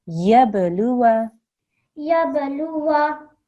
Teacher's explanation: there's a ba here, it's qalqala, so we have to make a jerk.